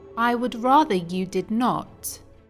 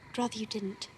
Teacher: we don't hear the pronoun I. The only thing noticeable is the D sound that comes from the contraction of I would. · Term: connected speech